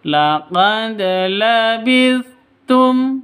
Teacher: Harus dipantulkan ke dalnya. Tapi agak rendah ketimbang qalqalah kubra. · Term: qalqalah sugra